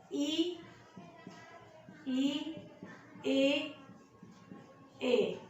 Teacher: वे स्वर जो जीभ के आगे के भाग से प्रयोग होते हैं अग्रभाग में आते हैं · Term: अग्र स्वर